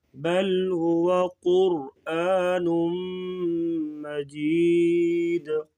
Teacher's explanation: قاف اور را کو پور پڑھیں گے